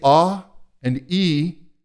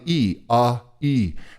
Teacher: the tongue moves forward on the E AE and the back of the tongue is an acoustic separator